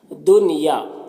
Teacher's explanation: دنیا کے نون میں اظہار مطلق ہو رہا ہے، یہاں پر اخفا نہیں کرنا ہے، یہاں پر اظہار ہوتا ہے.